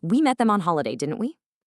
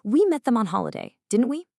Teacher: Falling intonation, where your voice drops downward at the end, gives the impression that you are completely sure of yourself and you're just seeking agreement.